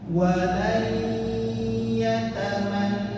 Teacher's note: Jadi dimasukkan ke dalam huruf ya, tapi dibacanya dengan gunnah.